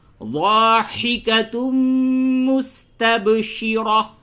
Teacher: ضاد زا یا دال نہیں ہوگا بلکہ ضاد، زبان کا جو سائیڈ ہے، جو کنارہ ہے، اس کو داڑھ سے لگائیں تو ضا، اور ہا حروف حلقی، ہا حلق سے نکالیں، اور تنوین کے بعد میم ہے. یہاں پہ اب غنہ کریں · را کو پر کریں اور یہ تا جو ہے اس کو حالت وقف میں چھوٹی ہا سے بدل دیں